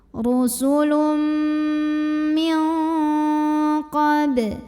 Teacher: Karena ada nun sukun yang bertemu dengan huruf qaf. Maka nun sukunnya ini dibunyikan samar-samar, siap-siap ke qaf disertai dengungan. Tapi ini dengungnya paling besar dibandingkan dengan kesamarannya. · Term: ikhfa ab'ad